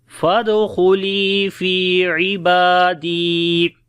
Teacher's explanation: فی کو لمبا کریں گے، یا مدہ ہے، با کو لمبا کریں گے، کھڑی زبر ہے اس کے اوپر